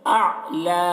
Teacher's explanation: عین ہے تو عین کی آواز کو حلق میں پہنچانا ہے، اعلی۔ لام کو یہاں پر وقف کریں گے تو لام کے اوپر کھڑا زبر لگا کر پڑھیں گے۔